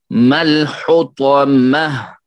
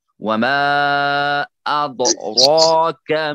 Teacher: وما اد پھر یہاں پہ اد راک راپور ہوگا، ٹھیک ہے، یعنی موٹا پڑا جائے گا۔ وما ادراک، راک کے اوپر را جو ہے کھڑا زبر لگا ہوا ہے، اس لیے مد کی آواز ہوگی، مد کی یعنی اس میں ہوگا مد۔